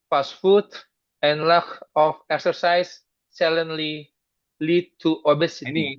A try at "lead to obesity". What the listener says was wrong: Ini kalau I itu mesti panjang dia. Lead to obesity. ini kalau kayak gini, ini double consonant tadi. Ada R, kemudian dimatiin, dia mesti panjang.